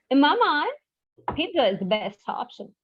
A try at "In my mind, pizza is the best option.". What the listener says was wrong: So when you're saying in my mind, it's going little out of rhythm. So like you can say in my mind.